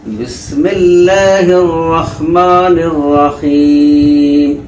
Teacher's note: میم کے نیچے جو زیر کی حرکت ہے یہ حالت وقف میں جزم بن جائے گی، اسی لیے پڑھا بسم اللہ الرحمن الرحیم۔